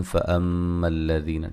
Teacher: یہاں میم مشدد پہ غنہ ضروری ہے